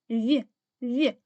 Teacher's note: під час вимовляння звука в зуби та губи створюють перешкоду для видихуваного повітря